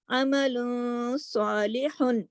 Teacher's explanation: عمل تھوڑی سی آواز ناک میں چلی گئی، لیکن صالح اس کو واضح طریقے سے پڑھا ہے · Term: اخفا